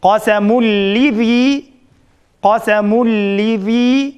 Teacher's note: Ra bilan lam kelsa, idg'om beg'ayr g'unna, ya'ni g'unnasiz idg'om bo'ldi. Shunga bu yerda biz g'unna qilmay qasamul lizi mushunda o'qiymiz.